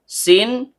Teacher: Ta, ujung lidah bertemu dengan pangkal gigi seri atas. Sin, ujung lidah bertemu dengan gigi seri bawah.